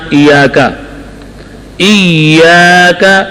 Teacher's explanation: حمزہ جو ہے حمزہ اقصائے حلق میں سخت